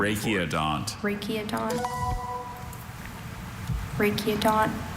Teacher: Yeah, that Latin uh hard C sound, hard K sound for the ch because it's Greek elements